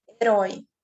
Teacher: O herói vai ter uma acentuação devido a ele ser uma oxítona, a tonicidade maior na última sílaba